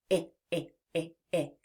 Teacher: There's some energy to it. When we say the I sound, our voice is on, which means that we can feel that vibration in our throat. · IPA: /ĭ/